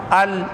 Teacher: آپ کی زبان کی نوک اوپر کے دانتوں میں سامنے کے 2-3 دانتوں کو لگ رہی ہے اور ال تب بھی وہیں لگ رہی ہے.